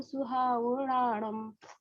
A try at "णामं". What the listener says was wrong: तीसरे चरण में णाणम नहीं णामम। सादम सुहाउ नामम, नाम जो है नाम का